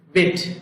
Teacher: বি উচ্চারণ করার সময় আবারও বলছি দুই ঠোঁট একত্রিত হবে